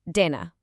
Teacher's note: It's not a hard punchy English D. Actually, it's a much softer sound where your tongue kind of touches the back of your top teeth. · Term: soft D sound